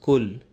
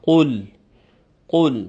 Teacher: In the first verse, we have to take care that the first letter is pronounced properly, and we say qul and not just kul. It's the deeper qaf, where the extreme back end of the tongue touches the palate in the back. So qaf and not the simple kaf.